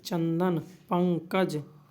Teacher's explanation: अनुस्वार इसका उच्चारण किससे होता है नाक से होता है